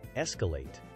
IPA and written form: ˈɛskəˌleɪt (Escalate)